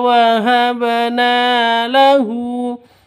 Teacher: 'Hu' memiliki panjang dua ketukan karena terdapat dammah terbalik di sana.